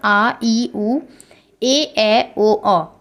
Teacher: स्वर के अंतर्गत आएंगे और जो आपका दीर्घ स्वर होता है इनके उच्चारण में हस्व से दुगना समय लगता है